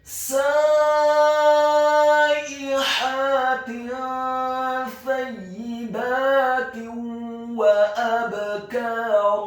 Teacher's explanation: Huruf ba-nya dibaca sukun tipis dan wajib untuk diqalqalakan atau dipantulkan · Huruf kafnya dibaca tipis fathah 2 harokat karena setelahnya ada alif. Dan di akhir ayat huruf ra-nya dibaca tafkhim tebal fathah 2 harokat karena setelahnya ada alif